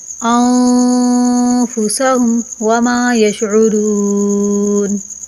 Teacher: نون ساکن پر اخفا کیا جاتا ہے، یعنی کہ اخفا کی آواز ناک سے چھپتی ہوئی آتی ہے